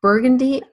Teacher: the second syllable contains an unstressed sound it's this murmuring sound that has its own name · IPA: / ˈbɜːrgəndi /